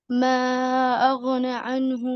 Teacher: تو غین لمبا رہے گا اور نون اس سے تھوڑا کم رہے گا